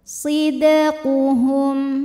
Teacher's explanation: maka Dal dipantulkan dengan pantulan yang kecil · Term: qalqalah sughra